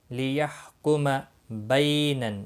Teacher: بی یالین ہے، تھوڑا نرمی کے ساتھ کھینچ کر ادا کریں گے